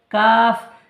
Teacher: জিভের গোড়া হতে একটু সামনে বাড়িয়ে উপরের তালুর সাথে লাগিয়ে উচ্চারিত হয়